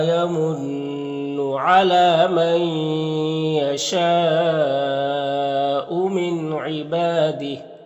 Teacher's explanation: یہاں پر نون ساکن کے بعد یا ہے حروف یومن میں سے تو ادغام ناقص ہوگا، اور یہاں پر حرف مد الف کے بعد حمزہ اسی کلمہ میں ہے تو یہ جو مد ہے مد متصل ہے، اس مد متصل کو 3 سے 4 الف کے برابر کھینچ کر پڑھتے ہیں۔ یہاں پر نون ساکن کے بعد عین حروف حلقی میں سے تو نون میں اظہار حقیقی ہوگا، نون کو ظاہر کر کے جلد پڑھیں گے۔ با میں الف مدہ ہے اور یہاں میں کھڑی زیر یا تا وقف مطلق کی علامت وقف کریں گے تو یہ کھڑی زیر سکون سے بدل جائے گا، تو اس طرح سے پڑھیں گے۔